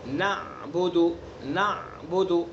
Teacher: نعبد اگر ہم نے پڑھ لیا تو یہ ابدال ہو گیا، یعنی ہم نے عین کو الف سے بدل دیا. تو ہمیں عین کو حلق سے ادا کرنا ہے